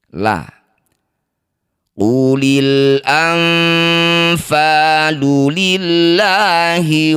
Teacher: Lafaz Allah didahului kasrah maka lamnya baca dengan tarkik atau dibaca dengan tipis